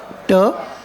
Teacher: तो आपका tip of the tongue है वो टीथ रिज या एल्वोलियर रीजन पे जाके अटैच होता है. That is we call as a alveolar region, right?